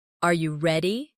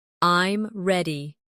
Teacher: your voice often goes up at the end of a question, Are you ready? and goes down at the end of a statement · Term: intonation patterns